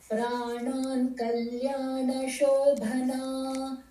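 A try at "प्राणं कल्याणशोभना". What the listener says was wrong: I think this is pranam, like the prana, not the pancha pranas. So pranan would be the pancha pranas that I believe has already completed. So rakshet pranam kalyana shobhana.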